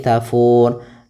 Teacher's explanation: Nah, sedangkan ro di sini ini kita namakan dengan sukun arid, sukun yang muncul disebabkan karena waqaf. Maka kita matikan ro-nya jadi tafur.